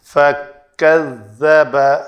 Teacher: زال کے لیے نوک لسان دونوں دانتوں کے درمیان آئے، دونوں دانت مینز اوپر والے اور نیچے والے، اور کاف کے لیے تکلف نہیں کرنا کہ وہ قاف ادا ہو، وَقَذَّبَ ایسے نہیں کرنا، بڑی آسانی سے یہ ادا ہو جاتا ہے۔